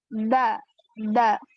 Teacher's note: Kalau huruf da itu ujung lidahnya bertemu dengan belakang gigi seri atas.